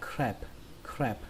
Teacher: chúng ta đã sẽ đọc chữ crab thành âm a bẹt